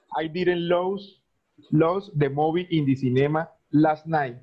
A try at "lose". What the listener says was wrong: Pero esto en presente no se dice los. Esto en presente se pronuncia luz. No, los. No, no. En presente se dice luz. Luz.